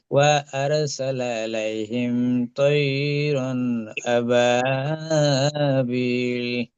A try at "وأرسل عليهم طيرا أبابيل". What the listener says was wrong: এই জায়গাটায় টান হয়, টান হবে না, তৈরন তাড়াতাড়ি হবে, কারণ এটা ইয়ালিন। ইয়ালিন দেখেন, ইয়া সেকেন্ড এটার দিকে যাবর। তৈরন আবাবিল।